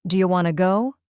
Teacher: The do you becomes do and want to becomes wanna. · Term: linking, connection